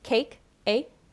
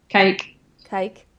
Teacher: you have a little more of a diphthong than me. So for me, it's cake, A.